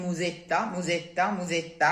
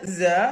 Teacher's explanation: It's always a strong sound, unless it's an S, intervocalic S, like in musetta, musetta, musetta, which is a simple Z, Z. That's the only simple Z sound, and it's spelled with an S, by the way.